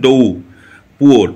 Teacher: ইংরেজিতে শব্দ শেষে আর থাকলে এবং তারপরে যদি কোনো ভাবেল না থাকে সেক্ষেত্রে আর উচ্চারিত হয় না। তো দেখো আর এখানে আছে এবং তারপরে কিন্তু কোনো আর ভাবেল নেই।